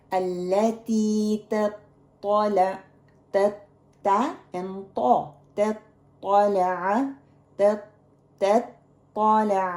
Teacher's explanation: it is a hard letter to pronounce, middle and the back raising same time